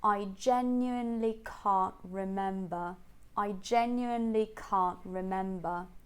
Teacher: You can notice that she doesn't say the T at the end of can't, yeah? She uses a glottal stop instead.